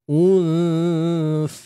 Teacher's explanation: Waktu kita dah selesai dengung baru keluarkan hujung lidah untuk sebut sa tu. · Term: ikhfa hakiki